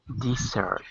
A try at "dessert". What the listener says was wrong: It's not E, it's I. Dessert.